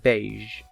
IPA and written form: beɪʒ (Beige)